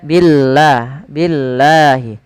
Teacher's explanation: lafal Allah bila sebelumnya huruf kasrah maka dia tipis, jangan dibaca billah, jangan billah, tapi dia billah, billahi.